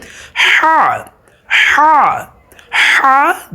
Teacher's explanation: এই হায়ের উচ্চারণটা হবে কোথা থেকে? হলকের মধ্যখান থেকে। এই যে আমাদের পুরুষদের যে একটা ভাঙা আছে, এই ভাঙা স্থান থেকে হবে, মহিলাদের গলার মধ্যখান থেকে এই উচ্চারণটা হবে আর কি।